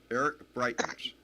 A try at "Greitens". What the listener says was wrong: Greitens with a G.